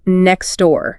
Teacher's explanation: The t just disappears to make it easier to say. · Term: elion